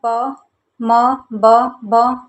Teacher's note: दोनों होठ मिल रहे हैं आपस में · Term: ओष्ठ ध्वनियाँ